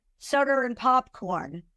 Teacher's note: The R is put in as a transition consonant to get you to the next word.